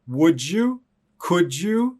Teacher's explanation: any word like would could did that end in d plus y is going to sound like a j sound